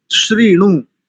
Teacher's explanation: श्री जो तालव्य शकार है उसमें री, ऋषि वाला री है